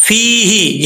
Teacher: آگے یا مدہ ہے، ایک الف کی مقدار لمبا کیا جائے گا